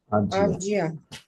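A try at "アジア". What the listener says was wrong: Asia is Asia. It's not Ashi, it's Aji. Asia. Asia.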